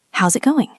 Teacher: Ah [clears throat] right is gets reduced. We often lose the i in is.